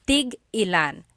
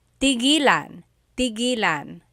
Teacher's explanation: So tig-ilan, when there's a hyphen in it, you have to have that glottal stop